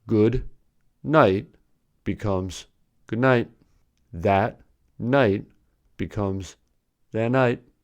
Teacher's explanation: When a plosive and a nasal are together, the plosive becomes a nasal. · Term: assimilation